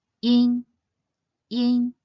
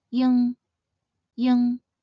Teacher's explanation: Note that the first ends with the “nn” sound, while the second ends with an “ng” sound.